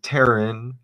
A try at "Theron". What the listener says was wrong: Theron. Theron. It's TH. Theron. Theron. The H is not silent.